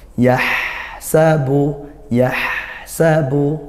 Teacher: yaitu sifatnya hams ya, aliran nafas